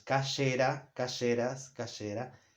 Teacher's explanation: instead of having the g sound, it'll have the y or sh sound for all the personal pronouns